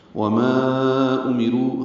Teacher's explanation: وما امرو حمزہ میم کو جلدی پڑھیں گے، رو پر پڑھیں گے. رو میں پھر مد منفصل ہے، اب اس کو لمبا کریں گے، چار چار حرکات، ماں کو بھی اور رو کو بھی.